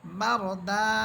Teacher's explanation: কিন্তু যখন আমরা রিডিং পড়ে এখানে থেমে যাব তখন আমরা এই দুই জবরকে, অর্থাৎ দাল হরফের উপরে যেই দুই জবর দেওয়া আছে এই দুই জবরকে আমরা এক জবর বানিয়ে একালিফ টেনে পড়ব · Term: একালিফ মদের তৃতীয় প্রকার